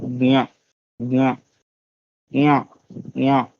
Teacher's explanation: कंठ से और नासिका से ज्ञा, कंठ पे जोर दीजिए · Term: कवर्ग